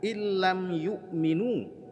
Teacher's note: Ada idgham tapi tidak ada dengungnya. Illam yu'minu, berikan nabrah tekanan suara kepada illam, ya, lamnya ada tanda tasydid di atasnya. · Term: idgham bila gunnah